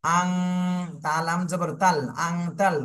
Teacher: এখানে নুন সাকিনের পরে ইকফার হরফ আসছে এজন্য নুন সাকিনে ইকফার গুন্না করতে হবে